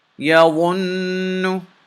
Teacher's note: Now notice I held the sound of the noon in my nose for a little bit. I didn't say yawunu. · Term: making gunna